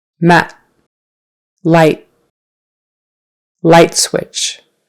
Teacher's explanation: The next couple will have a final T sound, where not much air comes out, but you still put your tongue up behind your teeth